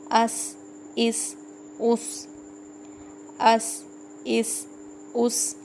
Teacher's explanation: سین سیٹی والے حروف میں سے ہے